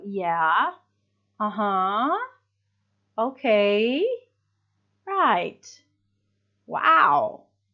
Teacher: So to show that you are listening, there is often a rising intonation.